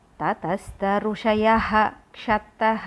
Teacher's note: If visargam is there in front of ksha, so that visargam we have to pronounce completely ha.